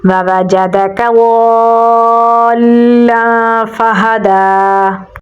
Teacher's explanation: ضاد کو پر یعنی موٹا پڑھیں گے، آگے الف مدہ ہے تو لمبا پڑھیں گے اور لام کے ساتھ ملائیں گے کیونکہ لام کے اوپر تشدید ہے، اسے مد متصل کہا جاتا ہے، تو اسے ہم 6 سیکنڈ لمبا پڑھیں گے، تو پڑھا جائے گا ہا کو گلے کے درمیان والے حصے سے نکالیں گے، دال پہ کھڑی زبر ہے تو اسے ہم لمبا پڑھیں گے، تو پڑھا جائے گا وَوَجَدَكَ ضَالًّا فَهَدَىٰ۔